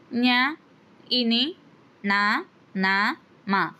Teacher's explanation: ముక్కు సాయంతో పలికే అక్షరాలు వీటినే మనము అనునాసికాలు అంటాము